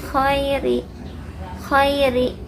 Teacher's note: Khairi dibaca lunak huruf lin. Ada ya sukun didahului harokat fathah. Khairi lunak ya.